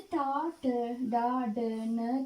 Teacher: කියන අක්ෂර පහ කියවනකොට දිවේ අග තල්ලෙන් මුදුනේ වදිනවා. ඒ නිසා ඒකට මූර්ධජ අක්ෂර කියලා කියනවා.